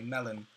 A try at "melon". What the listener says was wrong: No, but we pronounce it melon. But we drag out on the O.